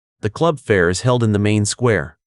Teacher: This is a simple statement, so focus on the prepositional phrase in the main square. Keep a falling intonation at the end of square to sound definitive.